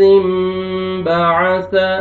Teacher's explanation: اذ انبعث اشقاها، اذ انبعث، نون ساکن کے بعد با آ رہا ہے تو نون کو میم میں چینج کریں گے۔ جب بھی تنوین اور نون ساکن کے بعد با آتا ہے تو تنوین کے اور نون ساکن کو میم میں چینج کرتے ہیں، جس کو اقلاب بولتے ہیں۔